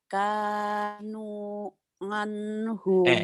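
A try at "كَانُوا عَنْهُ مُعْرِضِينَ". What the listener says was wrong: Emang Ibu orang mana nganhu? Ain Bu, bukan nganhu, anhu Bu. Nganhu. Ketahuan orang Jawa nih. Kanu.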